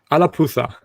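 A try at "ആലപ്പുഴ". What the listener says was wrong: It's not alapuza, it's alapura.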